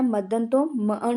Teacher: ਇਸ ਦੇ ਵਿੱਚ ਮੱਧਵਰਤੀ ਜਿਹੜਾ ਵਿਅੰਜਨ ਹੈ ਉਹ ਅਲੋਪ ਹੋ ਜਾਂਦਾ ਹੈ।